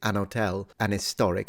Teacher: what they're doing is an hotel, an historic, so they're dropping the H. Because if the H is pronounced, the N shouldn't be there.